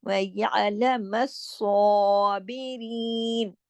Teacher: स्वाद मोटा है और खड़ी जबर के साथ है, और दो स्वाद है, तशदीद लगी हुई है